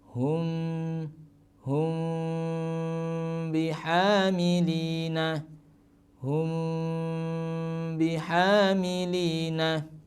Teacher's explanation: mim sukun bertemu dengan ba, bacanya samar tapi tetap ada dengungnya, cuman mendengungnya siap masuk membunyikan huruf ba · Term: ikhfa syafawi